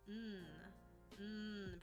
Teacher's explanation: n pronounced like our normal n Sound this does not have a vowel follow it it is its own syllable